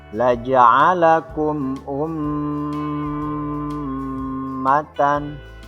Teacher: Tajwid selanjutnya pada huruf mim yang bertasydid ini dinamakan gunnah. Maka ketika membacanya berhenti pada huruf mim dengan panjang sekitar 2 harkat